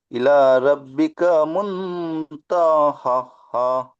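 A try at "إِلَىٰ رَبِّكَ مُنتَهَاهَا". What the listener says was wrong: হা হা নয়, হা খাড়া যাবার হা টান হবে, আবার হা আলিফ যাবার হা টান হবে।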